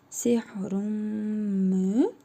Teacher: Tənvindəki nun hərfini isə burnumuzda tələffüz edərək bir əlif miqdarı uzadırıq. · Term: İdğam-ı məl-qunnə